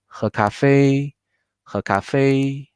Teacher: Fei is the last pinyin with tone mark, where we need to put the stress.